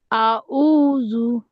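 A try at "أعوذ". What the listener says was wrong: আইনটা ভিতরে যাচ্ছে না, গলায় ধরে নাসিরুদ্দিন ভাইকে যেভাবে দেখালাম,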